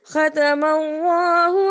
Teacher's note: ختم اللہ کو ہم نے موٹا پڑھا کیونکہ اللہ سے پہلے زبر آ رہا تھا۔